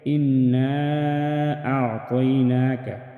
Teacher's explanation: مد منفصل کو 4 الف کے برابر کھینچ کر پڑھیں گے۔ أعطيناك، موٹا ادا کریں گے، مستعلیہ حروف میں سے ہے۔